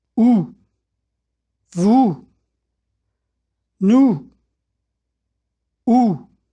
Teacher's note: To make the sound ooh, I round my lips and the inside of my mouth as though I were saying goose.